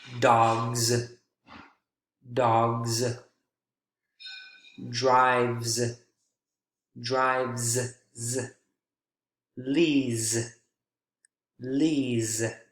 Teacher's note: this is a voiced consonant sound to go along with voiced sounds that precede it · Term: z consonant sound